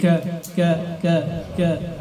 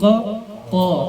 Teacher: Q Q terangkat pangkal lidahnya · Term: pangkal lidahnya terangkat